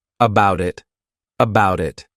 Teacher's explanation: I'll actually use a soft D sound, and you'll hear that sound on both sides of the word, and I'll say it as one, about it, about it.